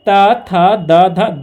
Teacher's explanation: इसका जो उच्चारण स्थान होता है दंत से होता है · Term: त वर्ग